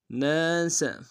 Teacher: سین کی سیٹی باریک ہوگی